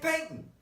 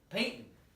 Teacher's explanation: now you got a glottal stop